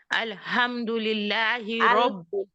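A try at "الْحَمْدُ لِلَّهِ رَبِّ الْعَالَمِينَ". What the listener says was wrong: अल के थोड़ा सा और रहे, आप माशाल्लाह अच्छा है। आप जल्दी नहीं करेंगे। अल्हम्दुलिल्लाहि रब्बिल आलमीन। ये काफी बहनों की प्रॉब्लम है ये कि हा के नीचे जब जेर ऑटोमेटिकली आ जाती है, जब हा को जज्म के साथ रखा ना जाए।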